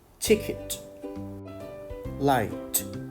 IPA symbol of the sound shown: t